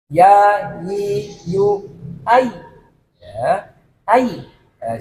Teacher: Di situ arahnya ya biar nggak nanti dikira ya itu di depan, enggak, coba di situ yang betul makhrajnya di tengah langit-langit ya, lidah itu mengarah ke langit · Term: huruf ya